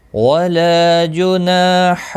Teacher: ولا لا الف مدہ ہے، ایک الف کے برابر کھینچ کر پڑھیں گے